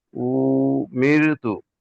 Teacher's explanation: র সাকিনের পূর্বে জের এসেছে, তাই র কে বারিক করে পড়তে হবে।